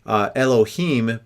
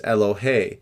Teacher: So normally the ending of the word in a plural is im. And so when it's in construct, the mem drops off and it lengthens the end